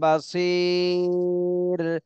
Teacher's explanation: বাসির এর র তে সাকিন দিতে হবে জজম দিতে হবে আর এর আগে তিন আলিফ টান দিতে হবে